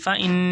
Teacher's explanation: نون پہ تشدید غنہ ہوگا